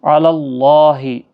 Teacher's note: قاف حروف مستعلیہ ہے، پور پڑھنا ہے۔ علی اللہ، اللہ کا لام زبر کی وجہ سے پور پڑھا جائے گا، اس کے اوپر کھڑی زبر بھی ہے، 1 الف کی مقدار کے برابر کھینچ کر بھی پڑھا جائے گا۔